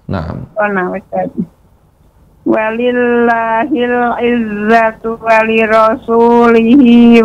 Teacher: nun yang bertasydid itu gunahnya sempurna ya dipanjangkan